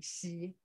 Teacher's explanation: Yeah, so like this is very similar to she sound in English. But when we say she in English, we round up the mouth, the lips, but we don't do it in Mandarin